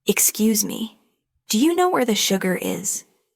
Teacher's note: Notice how do you changes to diaya. That's how native speakers really talk.